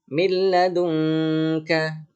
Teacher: bukan min ya, tapi mil karena dimasukkan ke dalam huruf la-nya.